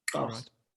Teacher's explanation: You actually pronounce it Xaus with a click on your palate.